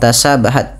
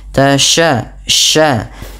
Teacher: Hati-hati jangan tasabahat tapi tasya sya ya. Intisyarus fil fam karena sifat tafasyinya.